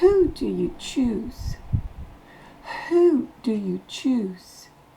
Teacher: le W ne se prononce pas le H est soufflé